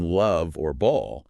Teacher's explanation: English to make the l sound like in love or ball your tongue is touching the roof of your mouth just behind your teeth